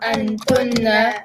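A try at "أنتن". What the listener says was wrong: Good, antunna.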